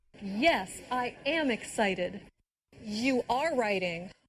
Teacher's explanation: did you hear the stress on the verb be when said am and are